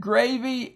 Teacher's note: I might mention it's accented on the first syllable